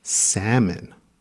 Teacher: remember the l is quiet in salmon